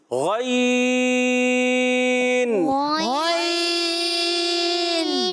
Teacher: غین ادا ہوتا ہے حلق کے اوپر والے حصے سے